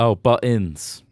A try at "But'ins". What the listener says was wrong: There's no L. There's no L.